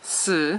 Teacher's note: but after a c and after an S it's just a grunting noise and it is fourth tone which is perfect for a grunting noise